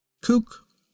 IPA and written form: kuk (kook)